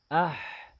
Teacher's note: حا میں آواز جاری ہوگی، اس میں صفت رخوت ہے